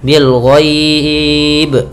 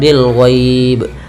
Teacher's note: juga dengan Mad Arid sukun yang dalam bentuk mad lin ya maka di sini kita boleh memanjangkan dua harakat boleh empat harakat